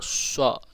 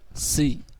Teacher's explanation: Kalau shad, sha, lidahnya naik. Kalau sin, lidahnya bawah. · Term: isti'la